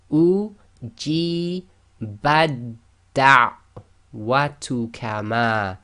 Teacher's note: So the example we have here is u ji badda watu kama. So we've joined the ba directly to the dal.